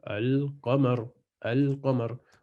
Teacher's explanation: Si la lettre qaf vient après le L, on prononce le lem avec une soukoun